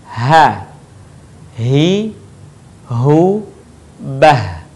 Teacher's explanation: Huruf H sekali lagi keluar dari tenggorokan terjauh.